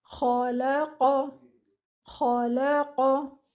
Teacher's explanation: And then lam is a light letter, khala. And then the qaf is a heavy letter again without air.